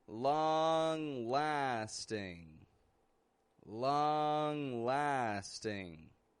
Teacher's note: Both of those words have an NG on the ending. Neither is releasing a G sound